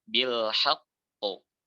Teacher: Nah, khususnya yang akbar, ketika 5 huruf ini ada di akhir dan dia bertasydid. Nah, ini cara pengucapannya sedikit dikuatkan dan masa qalqalahnya itu kurang lebih setengah masa